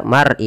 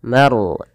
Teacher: Bainal mar'i, tebalkan lafal ro-nya karena dia ada huruf ro, kita namakan dengan ro tafkhim, harus ditebalkan, jangan dibaca mar'i tapi maru, manya tipis, ro-nya tebal